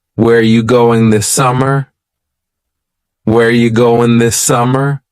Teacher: Where ya, which is you, going, dropping the G.